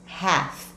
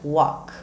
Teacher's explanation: Esse L você não vai pronunciar, como se ele não existisse.